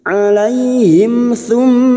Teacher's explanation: mim sukun bertemu tsa mim sukun dibaca jelas tanpa mendengung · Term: izhar syafawi